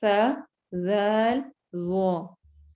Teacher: جب بھی تجوید کی ٹرم میں زبان کی نوک بولا جاتا ہے تو اس سے ہرگز مراد بالکل اس کا اینڈ نہیں ہوتا، اینڈ سے تھوڑا سا پہلے والا حصہ، وہ جب اوپر والے سامنے کے جو دانت ہیں ہمارے ان کے کناروں سے لگے تو یہ حروف ادا ہوتے ہیں۔ ان میں کسی طور پر بھی سیٹی والی آواز اس قسم کی نہیں ہونی چاہیے۔